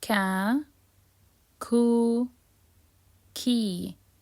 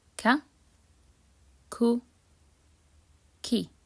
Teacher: Kaf is uttered from the back of the tongue with the soft palate, and it's very similar to the K sound in English.